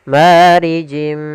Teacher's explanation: Sama di sini ada kasratain bertemu dengan huruf mim yaitu idgham bi gunnah. Kita masukkan lagi tanwinnya ke huruf mim dan ditahan gunnahnya.